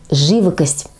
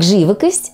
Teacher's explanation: Итак живокость ударение Ставим на первый слог